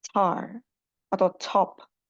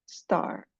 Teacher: Satunya aspirated atau ada letupannya, satunya tidak ada letupannya.